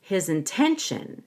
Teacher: I come up a little at the end of t-i-o-n to show that I have more to say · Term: up down up intonation